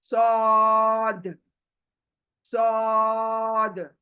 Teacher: मुंह गोल होगा, आवाज मोटी होगी, आ करके।